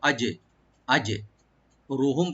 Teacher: রাটাকে deep করে পড়বো, আর মিম সাকিন এখানে জাহার স্বাভাবিক করবো আমরা, এখানে মিমে কোনো গুণ না।